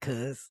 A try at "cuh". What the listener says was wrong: Cuh. No, not cuss. Cuh with an H.